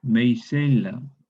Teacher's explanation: Luego esta K se vocaliza en yod, maicella. La yod cierra la A en E, la inflexiona, meicella, mencella, una E breve abierta.